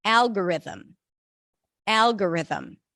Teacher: tense the back of the tongue for it Al R them stresses on the first syllable algorithm algorithm